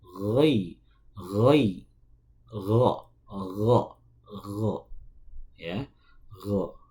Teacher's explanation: Ghin itu keluarnya dari ujung tenggorokan